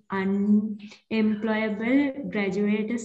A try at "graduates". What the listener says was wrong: Graduates, not graduators, graduates.